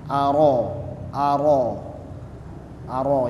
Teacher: jadi rnya lebih ditebalkan lagi karena memang dia Huruf tebal e dibaca tebal maksudnya dibaca tebal karena berharakat fathah Aro Aro